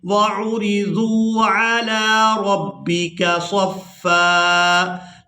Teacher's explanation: وقف کی صورت میں فا پر ایک زبر ادا کریں گے اور اس کو ایک الف مقدار کھینچ کر ادا کریں گے